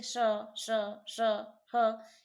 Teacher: जैसे श, श, श, ह, इसमें क्या थोड़ी सी सुरसुराहट भी है। इन वर्ण के उच्चारण में थोड़ी सी सुरसुराहट भी है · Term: ऊष्म व्यंजन